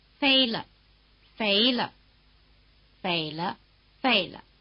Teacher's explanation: this pitch doesn't belong to the syllable the way a tone does instead it's determined by the tone of the preceding syllable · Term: neutral tone